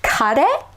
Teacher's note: keep it pure, do not add an e at the end and turn it into a diphthong